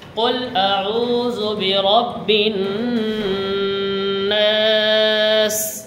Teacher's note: গুন্না ধরতে হবে রব্বিন এই যে এই গুন্নাটা ধরতে হবে এবং শেষে তিন আলিফ অর্থাৎ তিন সেকেন্ড পরিমাণ টান করে করতে হবে